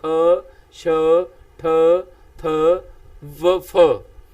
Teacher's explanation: डक में व्यंजन महाप्राण डकम व्यंजन किना न कहदे ने ना दे उच्चारण समय हवा अधिक फराटे वांग अधिक फराटे वांग तो भाव होता है इको दम हवा जड़ी है तेज रफ्तार